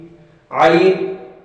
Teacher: تو یہ حلق کے درمیانی حصے سے یہ عین ادا ہوگا